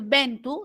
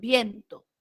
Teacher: A nivel de vocales, la E y la O se van a diptongar. En lugar de decir ventu, dicen viento.